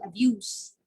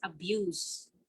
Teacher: when you say child abuse that's pronounced with s but when we use abuse as an action word as a verb it's abuse